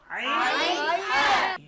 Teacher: কণ্ঠনালীর মধ্যখান থেকে, হলকের মধ্যখান থেকে দুটি হরফ উচ্চারিত হয়, আইন হা।